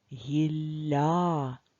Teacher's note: ль м'який подовжений звук